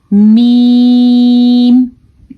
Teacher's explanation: میم بھی ہونٹوں کے گیلے حصے سے نکلتے ہیں, جہاں سے با نکلتا ہے وہاں سے ہی میم نکلتا ہے. دیکھیں آپ ادا کر کے دیکھیں, دونوں ہونٹ آپس میں ٹکراتے ہیں تو میم ادا ہوتا ہے, یعنی کہ میم کا مخرج دونوں ہونٹوں کی تری ہے.